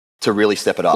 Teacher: This phrase has a falling intonation.